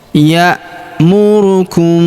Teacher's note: Kemudian huruf mim sukun bertemu huruf B lagi. Mim sukunnya melebur ke huruf B. Kita baca dengung dan samar. Dengungnya kita tahan dua sampai harakat.